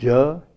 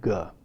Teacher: in arabic spoken in the country yemen the sound ja is always in free variation with ga